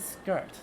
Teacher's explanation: skirt is a borrowing from old norse it preserves an sk sound where uh old english orthographically has sc and uh it uh